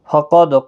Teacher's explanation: قاف مستعلیہ ہے اور دال ساکن پر قلقلہ ہوگا۔